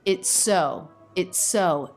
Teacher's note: we have an ending s a beginning s those link with a single s sound